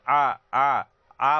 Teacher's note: जब आप बोलेंगे तो आपके जीभ अंदर की ओर पीछे की तरफ जाता है, इसीलिए इसे पश्च स्वर कहते हैं।